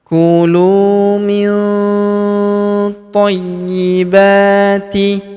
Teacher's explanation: huruf nun sukun bertemu huruf th. Maka nun sukunnya melebur ke huruf th. Kita baca dengung dan samar. Dengungnya kita tahan dua sampai harakat.